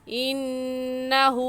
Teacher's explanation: انہو میں نون مشدد ہے اور نون مشدد پر ہمیشہ غنہ ہوتا ہے، اس وجہ سے انہو پر غنہ کریں گے.